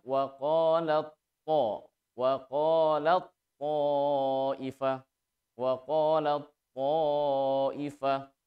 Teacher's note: Nah, hanya tak ketemu to, satu makhraj beda sifat, maka terjadi hukum idgham mutajanisain sehingga membacanya taknya jangan dibaca tetapi langsung lebur ke huruf to